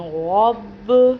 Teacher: اور با حروف قلقلہ میں سے ہے اس لیے اس کو قلقلہ کر رہے ہیں۔ با ہونٹوں سے ادا ہوتا ہے جو اس لیے ہونٹ دوبارہ ہونٹوں سے ٹکراتے ہیں تو پھر یہ غب کی آواز آتی ہے · غین بھی پر پڑھا جاتا ہے، پر مطلب موٹی آواز کر کے، بھاری آواز کر کے پڑھا جاتا ہے۔ اور با حروف قلقلہ میں سے ہے اس لیے اس کو قلقلہ کر رہے ہیں۔